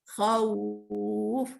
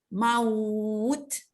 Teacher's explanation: suara yang mengalun lembut semasa melafazkan huruf waw dan ya yang berbaris fathah sebelumnya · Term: mad lin